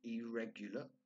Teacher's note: Notice that I don't pronounce the R's. English is a non-rhotic language, so it's not irregular, as we would say maybe in Turkish.